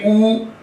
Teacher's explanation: आप ऊ का उच्चारण करें, आपके होंठ गोलाकार हो जाएंगे, ओ की तरह हो जाएंगे, गोल हो जाएंगे आपके होंठ। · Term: ओष्ठ